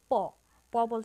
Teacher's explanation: প উচ্চারণ করতে আমরা আমাদের যে অষ্ট আছে বা ঠোঁট আছে এই ঠোঁটে ঠোঁটে একটা ঘর্ষণ সৃষ্টি হচ্ছে বা ধাক্কা লাগছে তারপর প উচ্চারণ হচ্ছে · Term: ব্যঞ্জন ধ্বনি